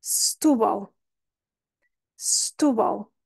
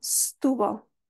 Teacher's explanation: este L final é considerado o Dark l em inglês que é um L que a língua vai para cima